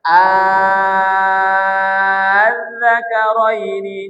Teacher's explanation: Mengganti hamzah kedua menjadi alif sukun sehingga menjadi mad lazim. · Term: ibdal